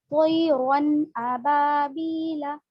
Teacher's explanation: तनवीन व नून साकिन के बाद हुरूफ हलकी आए तो नून को जाहिर करके बिला गुन्ना के जल्द पढ़ेंगे, इसको इजहार कहते हैं।